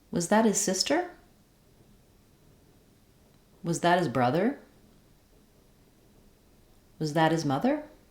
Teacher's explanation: the last word in the final column will be stressed so that the H of his can drop